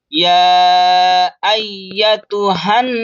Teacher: या के ऊपर तशदीद है, डबल पढ़ेंगे सख्ती के साथ